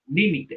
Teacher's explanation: Esdrújula, acento en la antepenúltima sílaba.